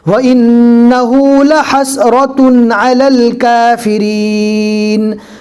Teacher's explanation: یہاں پر اخفا نہیں ہوگا کہ ہم تنوین کو ناک میں چھپا کر پڑھیں گے، یہاں پر اظہار ہوگا۔